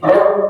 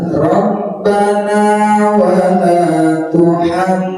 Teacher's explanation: baru mimnya tahan gunna mendengung